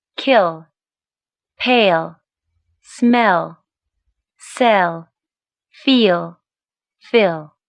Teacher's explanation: The voiced alveolar lateral after front vowels.